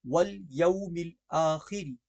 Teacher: لام باریک پڑھی جائے گی اور را بھی باریک پڑھی جائے گی